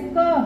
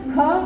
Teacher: क जो है वो अल्पप्राण है। है ना? ख महा महाप्राण है।